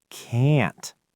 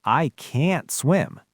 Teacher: I didn't even pop the t at the end, but you know it's negative because the vowel was stretched and stressed